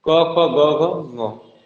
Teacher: ठीक है, इनको पहला वाला पहले कंठ, कंठ से, यानी कि क वर्ग किससे बोला जाता है? कंठ से।